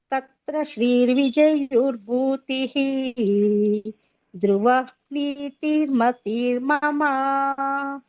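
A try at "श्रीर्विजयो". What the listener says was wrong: ವಿಜಯೋಲ್ಲ ಬರಿ ತತ್ರ ಶ್ರೀ ವಿಜಯೋ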